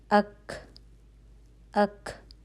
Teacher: آواز مخرج پہ جا کر ایک دم رک کر بند ہو رہی ہے، ٹھیک ہے۔ اک، زبان کی جو جڑ تھی وہ لگ رہی ہے نرم سخت تالو پہ، اور رک رہی ہے، بند ہو رہی ہے، ٹھیک ہے۔